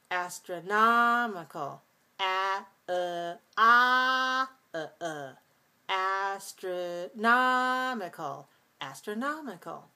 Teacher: we again have this alternation of clear reduced clear reduced